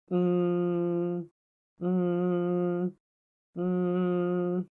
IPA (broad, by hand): m